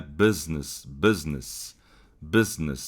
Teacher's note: A letra, o fonema U vai ser representado pelo símbolo fonético, que é um um izinho, mas é um izinho um pouco aberto · o E aqui está sendo representado pelo mesmo I, que é um I mais aberto, digamos, é um E